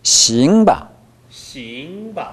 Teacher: 싱 할 때 아이 발음을 끌어줘 보십시오.